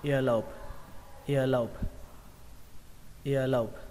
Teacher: Từ tiếp theo câu đó là ear lobe, âm ở đây âm âu các bạn nhé, xuống giọng. Ở đây trọng âm của nó rơi vào âm đầu tiên ear, ear, và xuống giọng âm thứ hai âu, lobe, lobe, và kết thúc bằng âm bờ các bạn nhé.